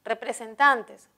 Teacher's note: en la última sílaba debido a que terminen n tildamos representantes representantes tiene el acento en tan por lo tanto es grave